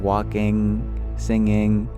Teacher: we bring the tongue back like you're mewing to seal off the vibration in the mouth cavity and bring it into the nasal cavity it becomes nasalized